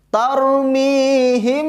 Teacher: Ditahan karena ada mim mati bertemu dengan ba.